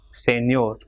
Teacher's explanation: For example, here the word ending in R, consonant, so it will be señor. So last syllable ñor will be stressed.